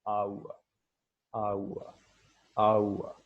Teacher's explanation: it begins with a vowel quality similar to a and then goes on to a glide towards the back close rounded area, okay, for which we use the symbol u, then ends with a mid central vowel a, shava. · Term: triphthongs